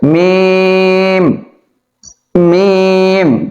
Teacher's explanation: দুই ঠোঁট লাগবে এবং লম্বা হবে। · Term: 4 আলিফ টান